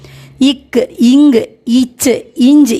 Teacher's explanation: முதலில் சின்னதான ஒரு ஈ சப்தம் சேர்ந்தால்தான் இந்த ஒலிகளே வெளியில் வரும் அல்லது பின்னாடி அ ஆ முதலான உயிரெழுத்துக்களை கூட்டி கா என்ற மாதிரி ஒலியை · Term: மெய்யெழுத்து